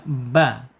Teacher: Asyafatain secara makhraj, terkatupnya 2 bibir